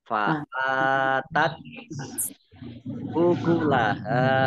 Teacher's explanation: kalau dibaca T-nya ada keluar S sedikit gitu ya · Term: tak sukun